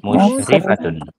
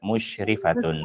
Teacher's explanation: tidak boleh kita katakan musyrifatun karena ri-nya di sini tidak panjang, tetapi pendek. Yang benar musyrifatun.